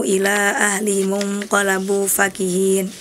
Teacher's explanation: Yang pertama dibaca panjang 6 harokat atau 5 harokat karena di situ ada mad jaiz. Nah, kemudian yang kedua hanya 2 harokat karena di situ tidak bertemu huruf hamzah ataupun alif.